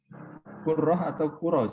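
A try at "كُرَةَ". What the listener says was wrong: Kuratal ya. Tidak ditasdid.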